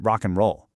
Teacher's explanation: and can even just turn into a quick n sound, you know, like in rock and roll.